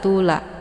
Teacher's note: La Ini dibaca panjang boleh empat atau lima kali ketukan ini dinamakan dengan Mad Jaiz munfasil tandanya ada huruf Mad Thobi'i